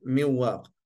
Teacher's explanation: die noon is weg maar die gunna is gebleven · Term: idghamun naqis